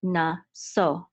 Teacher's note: we know that the accent is on the last syllable